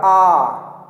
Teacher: जब हम आ का उच्चारण करते हैं तो हमारा मुंह पूरी तरीके से खुला होता है, इसीलिए उसको कहते हैं विवृत स्वर।